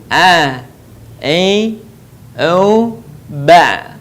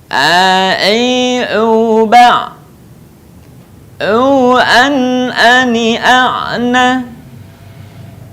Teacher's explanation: Hindari pengucapan huruf ain yang keluar dari rongga hidung.